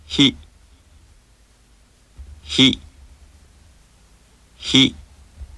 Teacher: this syllable sounds very similar to the English word he but the Japanese sound is more clipped and is produced with more friction